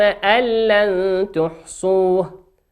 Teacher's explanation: نون ساكنة في كلمة أن، أتى بعدها حرف اللام في كلمة لن، واللام من حروف الإدغام بغير غنة